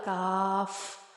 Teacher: قاف کا پڑھ لیا، اب کاف زبان کی جڑ اور تالو کے سخت حصے سے ادا ہوتا ہے